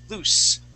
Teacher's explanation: with that S sound, that would be voiceless S